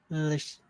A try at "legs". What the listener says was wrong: It's not lish. So lish would be like this. That would be Lesh. I'm saying legs with the G sound. So you are you are you are pronouncing the S sound, not the S sound. You're supposed to pronounce the G sound.